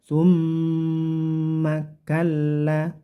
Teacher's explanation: mim yang bertasdid ini namanya bacaan gunnah, yaitu dengung. Dengungkan dulu sekitar 3 harokat.